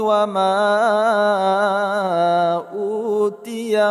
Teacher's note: ma kita panjangkan 2, 4 atau 5 harakat mad jaiz munfasil